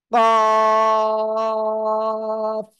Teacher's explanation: জিহ্বার গোড়া তার বরাবর উপরে তালুর সঙ্গে লাগিয়ে উচ্চারণ করবেন